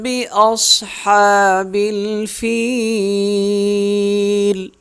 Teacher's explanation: صاد جو ہے وہ موٹی پڑھی جائے گی۔ ہا کو 1 الف کے برابر ہم کھینچ کے پڑھیں گے۔